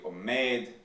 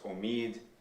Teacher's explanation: words like what was originally omed that becomes omid in Western dialects, like most Iranian dialects.